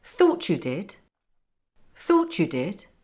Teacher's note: Did you just say what I thought you did? So intonation goes up on the stress word thought, and then down on you, and then up on did at the end.